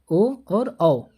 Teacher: ओ और औ बोलेंगे तो हमारा ओष्ठ गोलाकार होगा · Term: वृत्तमुखी